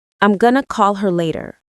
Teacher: See how going to becomes gonna and call her sounds like caller. That's linking in action.